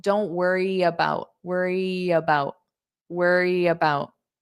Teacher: So you might hear this Y sound glide to the about.